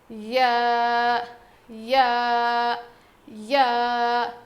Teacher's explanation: یا، زبان کے بیچ کے حصے سے ادا ہوتا ہے. یا یا یا، زبان کے بیچ کے حصے سے یا ادا ہوتا ہے.